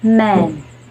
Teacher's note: closing the lips and making nasal consonant